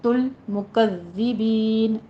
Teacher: زال کی تشدید ادا کرنی ہے، یہاں پہ سیٹی کی آواز نہیں آنی چاہیے